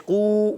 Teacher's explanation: واو مدہ ہے، ایک الف کھینچنا ہے اور قاف کو موٹا رکھنا ہے. قاف زبان کی جڑ، تالو کے نرم حصے سے قاف ادا ہوتا ہے، آپ نے یاد رکھنا ہے.